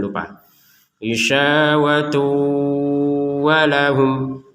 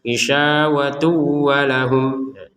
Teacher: Jadi ini harus dibaca dengan dimasukkannya tanwin ke wawu, kemudian dengung, jangan lupa. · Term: idgham bi gunnah